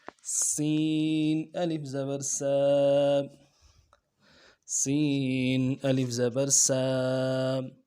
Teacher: سین، الف زبر سا، الف مدہ کو ایک الف مقدار میں کھینچیں گے۔ سین یہ سیٹی والا حرف ہے اور اس کی سیٹی باریک ہوگی۔ سیٹی ادا کرنے کے لیے اوپر اور نیچے دانتوں کو ملائیں گے، بیچ میں سے سیٹی نکلے گی۔